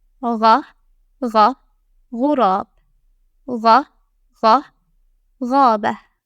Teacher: This letter produces a gargling-like sound, similar to the French R. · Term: Ghayn